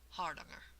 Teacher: they say that the A vowels are the ah sound, like in bother or caught, or for many of us Americans, father.